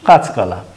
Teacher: তাহলে এই যে কাঁচকলা, এখানে কাঁচা এই স্বরধ্বনির পর ব্যঞ্জন ধ্বনি থাকার কারণে স্বরধ্বনিটি লুপ্ত হলো, লুপ্ত হয়ে এই একটি শব্দ তৈরি হলো কাঁচকলা।